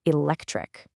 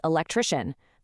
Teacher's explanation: The hard K becomes a soft sh.